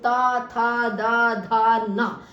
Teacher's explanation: ता में देखिए जब भी आप बोलेंगे ता था दा धा ना, तो सबका उच्चारण करते हुए हमारी जीभ जो है वो दांतों का स्पर्श कर रही है